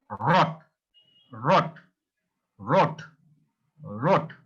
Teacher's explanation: it's not a sharp sound it's sometimes you have to say with in your throat